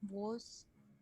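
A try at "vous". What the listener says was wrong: It is not woos. First of all, it's not woos, it's woo. Woo. Woo, okay.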